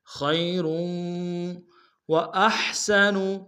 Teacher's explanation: تنوین کو آگے واو کے سامنے لیں گے، واو کے اوپر تشدید زور دیں گے